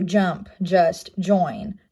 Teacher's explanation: Next affricative here looks like the last one is the D with the shorter 3 there at the bottom. It's an alveolar placement. It is voiced, and it represents the J sounds.